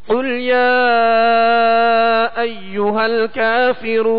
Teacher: یہ قل جو ہے موٹے قاف کے ساتھ ہے، یعنی دو نقطے والا قاف، جیسا کہ ہم نے مشق میں مدنی قاعدے میں پڑھا کہ قاف کو پر یعنی موٹا پڑھیں گے کیونکہ حروف مستعلیہ میں سے ہے